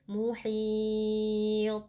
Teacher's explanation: huruf ta terakhir di sini merupakan huruf qalqalah sehingga hukumnya adalah qalqalah kubra karena posisinya ada saat waqaf, jadi ta-nya kita pantulkan.